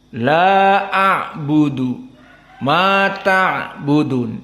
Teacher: meskipun dia dalam keadaan jahar namun disebutkan tawassut karena di saat melafadzkan ain dan sukun ada sedikit suara yang keluar. Ada kerasa inilah dikarenakan dia tawassut.